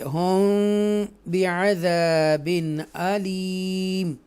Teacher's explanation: ہم اخفاء شفوی کریں گے کیونکہ میم ساکنہ کے بعد با آ رہا ہے